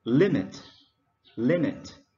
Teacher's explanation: Limit, we stress on the first syllable.